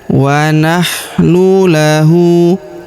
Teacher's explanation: Huruf hu kita panjangkan dua harakat karena berharakat U terbalik.